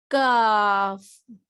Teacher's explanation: قاف، یہ 3 حرف والا ہے، قاف، موٹا ہے اور حلق کے پاس سے نکلتا ہے. کاف، یہ باریک ہے اور یہ بھی حلق کے تھوڑا دور حصے سے نکلتا ہے